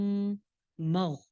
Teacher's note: غین موٹا ہے لیکن ہلانا نہیں ہے